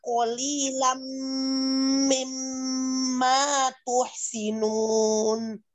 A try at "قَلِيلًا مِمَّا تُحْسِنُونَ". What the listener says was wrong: Ada ya tadi di dui ya, idgham digunahnya kurang sedikit.